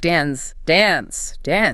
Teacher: But often in the UK, it's a longer a sound.